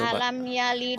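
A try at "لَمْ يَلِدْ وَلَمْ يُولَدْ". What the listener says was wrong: Kok alam? Alam dapat dari mana alamnya? Lam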